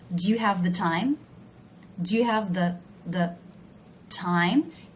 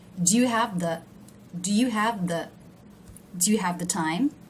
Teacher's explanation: Do you see how the word the is low in pitch? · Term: function words